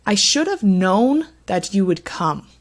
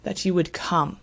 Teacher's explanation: our pronouns I and you actually don't receive that stress